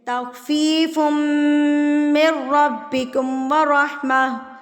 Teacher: میم اور نون مشدد پر آپ نے غنہ کرنا ہے یعنی کہ ناک میں آواز کو لے کے جانا ہے. میم کی آواز کو آپ نے ایک حرکت کے برابر ناک میں روک کے رکھنا ہے 1 سے 2 سیکنڈ.